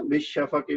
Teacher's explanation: بالشفق میں شین چونکہ شمسی تھا تو وہ تشدید کے ساتھ با کے ساتھ مل گیا